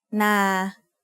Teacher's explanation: which is low class initial consonant plus life ending equals midtone a midtone is pronounced at a flat pitch in the middle of your regular vocal range